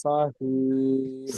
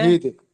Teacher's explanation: এই শিন অক্ষরটি আপনার সিনের মতো উচ্চারণ হচ্ছে